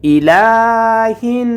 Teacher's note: লামের উপরে খাড়া জবর আসার কারণে এক আলিফ টেনে পড়তে হবে